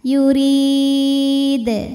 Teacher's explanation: Qalqalah Kubro karena huruf Qalqalah ini sukunnya karena berhenti ya bukan sukun asli dibacanya dipantulkan dengan pantulan yang lebih besar